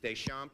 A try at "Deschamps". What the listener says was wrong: Pronounce it Deschamps. Well, don't pronounce the the P.